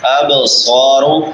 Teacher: اب صارو، اب با حروف قلقلہ میں سے، اس کو ہلا کے پڑھیں گے. اب صارو، صاد سیٹی والے حروف میں سے بھی اور مستعلیہ میں سے بھی